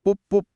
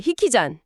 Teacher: 한국어의 강한 비읍 발음이 일본어에서는 흐 발음으로 약화되었네요.